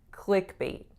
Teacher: the stress is on which part clickbait it's on the first part